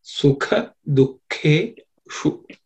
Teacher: Sukha, then dukhe, that k also is second letter in the ka varga, so it has to be aspirated. Shu, cerebral sha, so tip of the tongue should point to the roof of the mouth